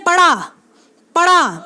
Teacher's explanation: तो वो जो कड़ाक सी आवाज़ जो आपको सुनाई देगी, जैसे पड़ा पढ़ा बोल करके देखें तो एकदम से आपको क्या है, दबाव महसूस होगा।